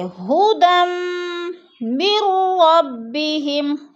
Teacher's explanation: ھدم 2 زبر تنوین کو میم مشدد کے ساتھ سختی سے جماؤ کے ساتھ پڑھیں گے، یعنی ادغام کریں گے، جیسے ھدم من ربہم۔